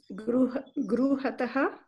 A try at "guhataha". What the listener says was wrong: Gu, not Gru. Gu. Guhataha.